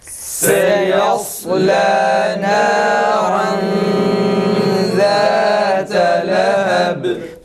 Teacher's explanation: Yalnız kalın ra'dan dolayı öyle oluyor. Ra kalın olduğu için bu sefer ihfa da genizden biraz kalın şekilde çıkıyor.